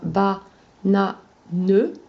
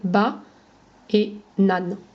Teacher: à l'oral, comme on ne prononce pas le ne, on va juste avoir 2 syllabes orales, ba et nan.